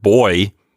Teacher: I think of gliding from one vowel sound to another. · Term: diphthong